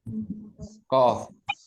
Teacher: Kalau kof itu di pangkal di ujung lidah belakang, bukan di tenggorokan ya.